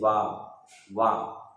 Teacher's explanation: वह दांत और ओठ से बोला जाता है, जैसे वाह दांत और ओठ से, इसलिए यह दंतोष्ठ वर्ण है।